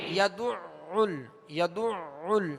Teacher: یدعل، یدعل، اب یہ دال پر بھی عین پر بھی پیش ہے اور عین پر تشدید ہے، اس کو 2 مرتبہ پڑھیں گے، دوہرا پڑھیں گے، وسط حلق سے ادا کریں گے